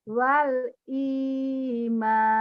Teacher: kenapa jadi panjang Karena ada Mad Thobi'i